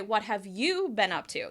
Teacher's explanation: You'll put extra stress and emphasis on you.